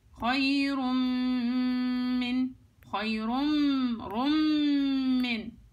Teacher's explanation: النون هنا ادغمت في الميم ادغام كامل، فبقولش خيرم هيك اللفظ الصحيح.